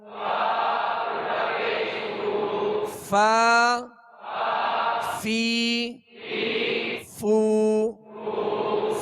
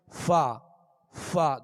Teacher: فا کا مخرج یہ ہے کہ اوپر کے سامنے والے دو دانت جو ہیں، دونوں دانتوں کے کنارے اور نچلے ہونٹ کا تر حصہ، اوپر کے یہ دونوں دانتوں کے کنارے اور نچلے ہونٹ کا تر حصہ، اس سے فا ادا ہوتا ہے۔